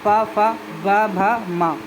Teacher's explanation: ओठों से इनका उच्चारण होता है